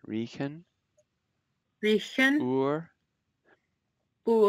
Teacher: It's a much softer R than the American R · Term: The R